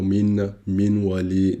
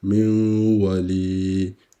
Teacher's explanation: Però c'è la gunna prima, due harakat.